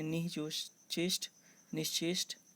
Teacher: विसर्ग का तालव्य श हो जाएगा